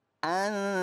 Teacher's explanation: Suara nun sukunnya nyaris kepada huruf ta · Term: ikhfa hakiki